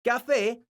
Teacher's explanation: La palabra café es una palabra aguda porque su sílaba tónica es la sílaba fe. Esta palabra termina con una vocal, entonces tiene un acento ortográfico que se escribe en la vocal de la sílaba tónica, que es la letra E.